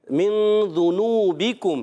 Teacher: ذال کی ادائیگی ذا سے نہیں بدلنی